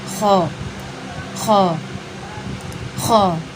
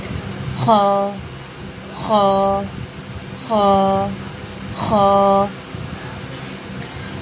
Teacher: خ کا مخرج ہے ادنیٰ حلق سے منہ کی طرف والا حصہ، یعنی جو ہمارا فیس ہوتا ہے نا، سامنے والا حصہ، اس سے ہمارا ادا ہوتا ہے خ، خ، خ، ٹھیک ہے، ادنیٰ حلق سے منہ کی طرف والا حصہ۔